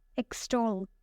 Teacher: It has 2 syllables and the stress is on the second one.